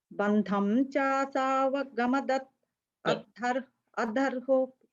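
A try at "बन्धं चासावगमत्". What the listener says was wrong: No, you're saying vagamadhat. You're saying it's vagamat. Just so if after ma, you have a the and you have a the. You have only two, right? So that the we are breaking it into it and a a. Okay, so it becomes chasavagamat.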